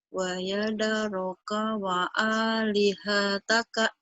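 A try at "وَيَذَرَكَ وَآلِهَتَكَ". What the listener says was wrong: Wa yadharaka wa alihataka. Tuh bagus, cuma tinggal kurang cepat aja. yadharaka wa panjangnya cuma A doang. Wa alihataka.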